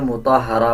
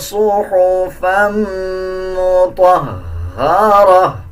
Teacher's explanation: اب اکثر لوگ اس میں یہ غلطی کرتے ہیں، مطہرہ پڑھ دیتے ہیں، اس طرح نہیں پڑھنا، بلکہ ہا کے اوپر شد ہے، ہا کو مضبوطی کے ساتھ ادا کیا جائے گا، اور جب گول تا پہ وقف کریں گے تو یہ ہا بن جائے گا اور دونوں زبر کو سائلنٹ کر دیں گے۔